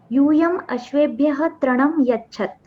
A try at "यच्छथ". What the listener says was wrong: अंतिम आकार को जोड़कर बोलिए, वरना बहुत प्रॉब्लम हो जाएगी। हलंत जैसा मत बोलिएगा, यच्छथा, ठीक है?